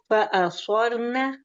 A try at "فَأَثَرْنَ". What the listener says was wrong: آپ کا سور نہ ہو رہا ہے. نہیں آپ کا نا مجھے سور کی جی سا بھی موٹا ہو رہا ہے.